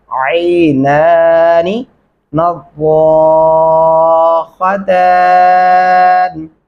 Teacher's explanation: عین گلے سے ادا کریں گے۔ پہلا نون لمبا ہوگا، دوسرا والا نہیں ہوگا۔